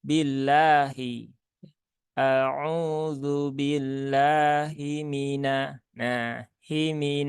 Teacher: ketika sifat khofa ini muncul pada huruf ha maka huruf h-nya akan menjadi huruf yang samar